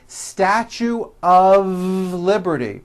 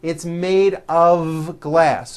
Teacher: mistake even though the word of is spelled with an F we pronounce the word of with a voiced V